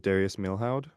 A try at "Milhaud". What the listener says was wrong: Milo is how you pronounce it. Um, you don't pronounce the H or the D. Milo.